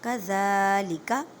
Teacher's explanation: ذال کو نرمی سے ادا کریں، ذال کو ایک الف کی مقدار میں کھینچ کر پڑھیں